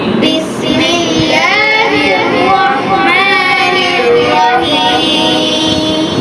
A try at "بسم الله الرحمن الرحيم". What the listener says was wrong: लास्ट में आ निकालिए.